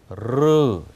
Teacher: 이 러시아어의 R은 자음으로 thrill, 혀가 떠는 소리입니다. 그래서 R 이렇게 소리를 분명히 내셔야 됩니다.